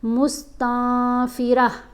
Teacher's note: یہ جو گول تا ہے یہ جب اس کے اوپر وقف آئے نا تو یہ سائلنٹ ہو جاتی ہے اور ہا کی آواز دیتی ہے